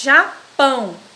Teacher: japão já é sílaba átona e pão é sílaba tônica